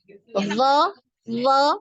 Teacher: aliran nafas tertahan aliran suaranya mengalir ya do do nah ini ada aliran suara ya terdengar ya